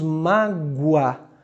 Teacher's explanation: Esse O tem som de U, é como se disséssemos mágoa. Então, semivogal mais vogal, ditongo crescente. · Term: O com som de U